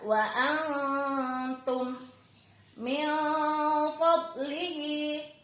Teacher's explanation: Wa antum min fadlihi, nun sukun ketemu fa, ditahan dulu 3 harokat sambil disamarkan. N-nya tidak boleh jelas, bukan min tapi min fad. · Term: ikhfa